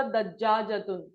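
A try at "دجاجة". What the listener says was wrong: दज्जा नहीं, गलत है, दजाजतुन, प्रोनाउंसिएशन गलत, जीम पर तशदीद नहीं, फतहा।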